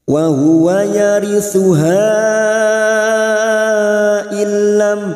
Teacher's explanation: Wa huwa yarithuha illam, masuk ke huruf lam, nun sukun bertemu lam idgham bila gunah, hanya masuk tanpa mendengung